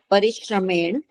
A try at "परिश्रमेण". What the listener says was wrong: परिश्रमेण हलंत नहीं है।